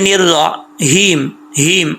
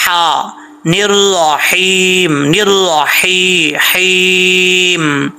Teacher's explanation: یہ ہا کا تعلق حلق سے ہے، سینے سے نہیں ہے، باریک ہا ہے